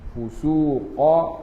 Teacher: Qaf pangkat lidah angkat